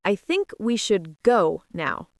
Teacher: The stress is on go because that's the most important word in the idea. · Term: sentence stress